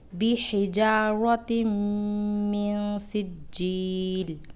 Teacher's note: یہاں تنوین کے بعد میم مشدد ہے، اس لیے یہاں گنہ کریں گے